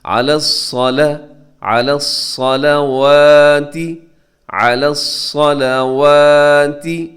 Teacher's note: آپ نے صرف حرف صاد کو جو ہے موٹا کرنا ہے، اس کے ساتھ لام جو ہے اسے آپ نے بالکل موٹا نہیں کرنا